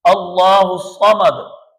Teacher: یہاں بھی لفظ اللہ کے لام سے پہلے فتح ہے، زبر ہے، تو اس لفظ اللہ کے لام کو پر پڑھیں گے۔ اللہ الصمد، صمد اور سمد اس میں فرق ہے۔